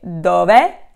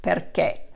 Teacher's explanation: dove is more open, perché is more closed, perché. Okay, so it's a slight difference there.